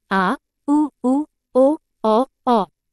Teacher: उदाहरण अ ग पश्च स्वर परिभाषा जिन स्वरों के उच्चारण में जीभ का पिछला भाग सक्रिय रहता है।